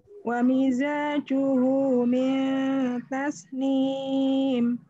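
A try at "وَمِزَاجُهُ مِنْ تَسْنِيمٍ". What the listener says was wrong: Bagus. Tasnim. Sinnya lancipkan lagi. Tasnim.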